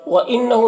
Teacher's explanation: وَإِنَّهُ نون مشدد غنہ کے ساتھ پڑھیں گے ، ہو ان میں الٹا پیش ہے، ایک الف کو برابر